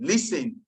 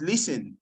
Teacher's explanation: The T in listen is silent. It's not listening, it's listen.